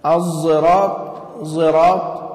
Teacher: إشمامها بما يشبه الضاء العامية في بعض اللهجات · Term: الإشمام